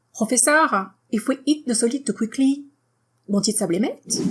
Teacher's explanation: Now, if you want to sound even more French, you want to make sure that your intonation goes up before every comma, and also at the end, of course, because it's a question. So, Professeur, if we eat the solid too quickly, won't it sublimate?